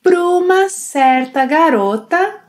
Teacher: also links para and uma, pruma.